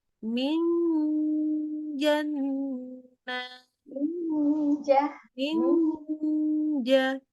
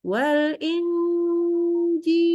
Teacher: ada bunyi n Iya tapi bukan n yang sempurna karena apa karena dia tengah lidah yang kena ke langit-langit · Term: ikhfa